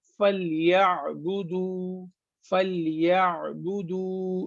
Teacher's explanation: ये आइन जो है वो गले के बीच में से निकलता है